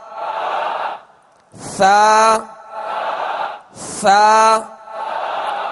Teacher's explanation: زبان کا سرا، زبان کا سرا، تا دال تو میں زبان کی نوک تھی، اور ثا میں زبان کا سرا اوپر کے دانتوں کے اندرونی کنارے. زبان کا سرا اور اوپر کے دانتوں کے اندرونی کنارے.